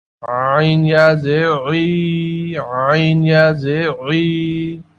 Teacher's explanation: عین حلق کے درمیانے حصے سے ادا ہوتا ہے، اس کی ادائیگی میں سانس رک جاتا ہے